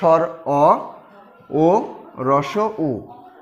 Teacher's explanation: তারপরে পশ্চাৎ স্বরধ্বনি। পশ্চাৎ মানে হচ্ছে পেছনে, অর্থাৎ ভিতরের অংশ থেকে উচ্চারিত হয়